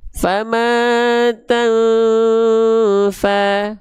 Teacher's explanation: Ketika disamarkan, ketika disamar dengungkan, ditahan kadarnya dua harokat. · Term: ikhfa